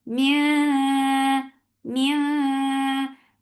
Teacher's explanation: Mia mia this ikhfa is light, so keep your tongue straight.